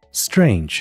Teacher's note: 字母组合▁tr▁在▁s▁后是不送气的